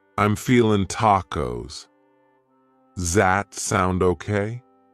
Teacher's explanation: does that sound okay reduces to z sound okay